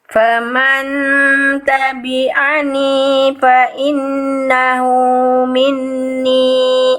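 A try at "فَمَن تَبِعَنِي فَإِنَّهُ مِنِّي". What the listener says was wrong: Nah, nun tasdidnya jangan lepas lagi, disiplin. Yo, nun tasdid. Ini ada 2 nih, tahan. Faman tabi'ani fa innahu minni.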